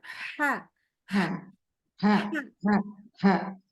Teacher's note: Ini hanya kayak orang kita kalau baca ha yang ini nih kayak kita lagi kepedesan banget.